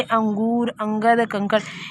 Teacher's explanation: स्वर के बाद आने वाला व्यंजन है जिसकी ध्वनि नाक से निकलती है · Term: अनुस्वार